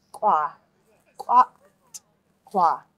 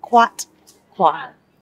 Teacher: this TL is a hard one because you need to pronounce the T and the L together. And it's like a that sound.